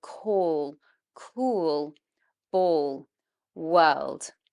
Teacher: try to feel that the back of the tongue is coming up, and that's when you know you're making dark L